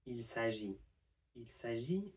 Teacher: we can drop the L from the il